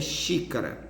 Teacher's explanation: que o som mais forte é na antepenúltima sílaba · O xi é a pronúncia mais forte, é a antepenúltima sílaba, então é uma palavra proparoxítona e precisa ser acentuada. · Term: sílaba tônica